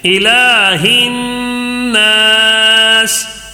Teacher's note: نون الف زبر نا، یہاں نون مشدد کا غنہ ہے، نون کے اوپر تشدید ہے، ٹھیک ہے. نون مشدد کا غنہ بھی ہے اور یہاں پہ الف سے پہلے زبر ہے تو ایک الف کھینچ کر بھی پڑھنا ہے